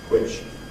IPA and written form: hwɪʧ (which)